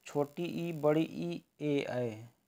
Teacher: छोटी ई बड़ी ई ए ऐ जो आगे से बोले जाते हैं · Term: अग्र स्वर